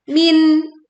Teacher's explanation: kita membacanya dengan menjelaskan bunyi nun sukun. tidak tergabung dan juga tidak memantul.